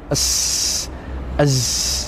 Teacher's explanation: Nah, sehingga ketika kita membaca sifat ini maka ada suara ya yang keluar dari celah sempit antara ujung lidah, demikian pula dengan 2 gigi seri atas dan juga bawah. Ada udara atau suara yang keluar dari celah-celah tersebut. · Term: sifat berdesis